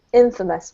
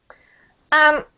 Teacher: The emphasis is on the first syllable